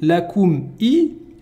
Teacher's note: On utilise les lèvres pour le mime. Et la hamza, c'est le fond de la gorge.